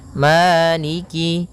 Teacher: Pada bacaan maiki di lafal ma ada hukum tajwid berupa mad thabi'i yaitu adanya fathah bertemu dengan alif panjangnya dua harakat